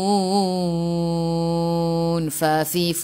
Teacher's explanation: Fa, keluar angin kan? Jadi hurufnya hamas.